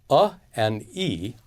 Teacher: a and i are short; they're considered to be one unit in duration.